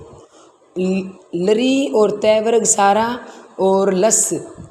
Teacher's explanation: तो ये बोले जाएंगे लरी और तय वर्ग सारा और लस, ये दंत से बोले जाएंगे